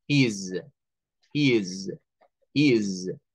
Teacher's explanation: esa S de acá del final va a sonar como una Z, como una Z, es decir, es la S con el sonido vibrante